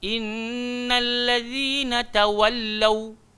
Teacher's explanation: Lau huruf waw muncung habis-habis.